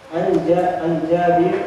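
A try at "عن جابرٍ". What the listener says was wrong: An Jabirin ya, baca aja harokat dia 6.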